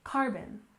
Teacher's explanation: stress on the first syllable in carbon